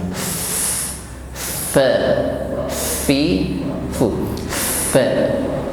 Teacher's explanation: Dan sifat yang mengiringi huruf fa adalah hamas, ada nafas yang mengalir. Fa, fi, fu, fa.